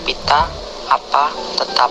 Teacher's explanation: konsonan P kriteria bunyi bilabial hambat tak bersuara